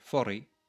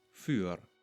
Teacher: the I in the second syllable causes the vowel to be pronounced more frontally. We now have für.